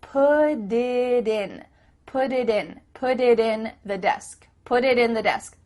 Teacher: your tongue is just tapping the top of your mouth to make a d